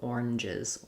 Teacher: it has the z sound, the is sound at the end if you make it plural